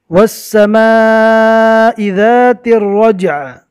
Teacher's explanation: عین کے نیچے زیر ہے، رکنے کی حالت میں زیر جزم بن جائے گا